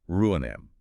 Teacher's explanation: In the word ruinem, you have two vowels sitting right next to each other, the U and the I. This is called a hiatus.